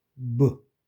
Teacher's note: PB는 입술로 공기를 막았다가 공기를 터치는 거. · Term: 무성음 유성음